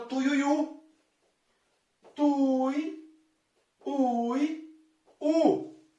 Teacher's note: Perceba que o mais forte é a última sílaba, o u. O tuiuiu. Esse u se prolonga por mais tempo. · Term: oxítona